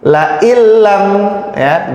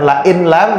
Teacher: bukan la in lam tapi la illam, nunnya langsung masuk ke lam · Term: idgham bila gunnah